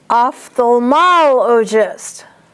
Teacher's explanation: So that first one, ophthalmologist, the accent is on MOL.